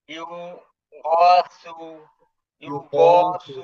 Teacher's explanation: গয়নটা হলো গলার মাঝামাঝি থেকে একটু চাপে উচ্চারণ হবে